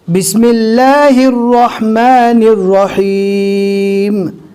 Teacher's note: یہاں پر اللہ کے لام کو ہم نے باریک پڑھا، کچھ جگہ پر اللہ کا لام پور پڑھا جاتا ہے، اسی طرح یہاں پر رو کو ہم نے پور پڑھا، حالانکہ کچھ جگہ ایسی بھی ہے جہاں پر رو کو باریک پڑھا جاتا ہے۔